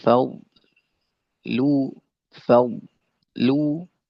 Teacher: Terus apa tadi saya jelaskan ya dan juga fal lu fal lu bodnya tebal lamnya tipis jangan sampai lamnya jadi tebal